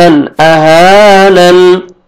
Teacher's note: جب سٹاپ کریں گے تو نون زبر، نون ساکن ہو جائے گا